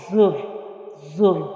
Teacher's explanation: زا جو ہے وہ سیٹی والے حروف میں سے ہے، اور اس کو سختی سے پڑھیں گے